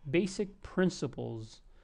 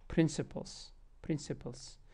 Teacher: you have an S here notice how I say basic principles notice how this s almost sounds like a z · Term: voiced s